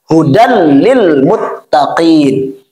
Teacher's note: maka cukup masukkan bunyi tanwin ini kepada bunyi huruf lam lalu jangan ditahan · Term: idgham bilagun